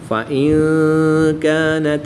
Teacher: نون ساکن کے بعد کاف حروف اخفا میں سے ہے تو یہاں پر اخفا ہوگا یعنی غنہ زمانی کر کے پڑھیں گے